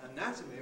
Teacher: when we have the noun anatomy, where the stress is on the second syllable of the stem, we get a strong vowel in that syllable, and weak vowels in the other two.